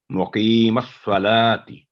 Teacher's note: تی کی آواز لمبی نہ ہو، تی 1 سیکنڈ صرف، لا کی آواز 2 سیکنڈ اور کی آواز 2 سیکنڈ، مقیم الصلاتی.